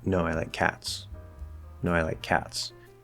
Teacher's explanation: we're kind of rising on one falling on the other